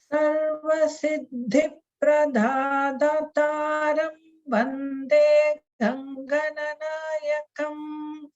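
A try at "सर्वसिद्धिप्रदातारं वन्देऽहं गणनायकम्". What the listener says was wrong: The only thing is it still sounds a little bit like the Da in Pradataram is coming out like a Mahaprana. It just sounds a little bit like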